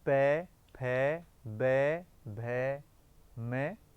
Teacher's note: ये जो सारे वर्ण हैं ये ओष्ठ के कारण बोले जाने के कारण ओष्ठ कहे जाते हैं।